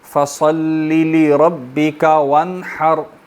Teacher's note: وانحر میں ہا کو حلق سے پڑھیں گے اور اس کے بعد را ساکن کو موٹا پڑھیں گے · لام کو لمبا نہیں کرنا، فصلی بالکل ایک زیر اور پھر دوبارہ زیر